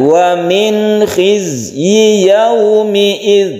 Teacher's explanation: nun bertemu kha ini adalah izhar, tidak kita dengungkan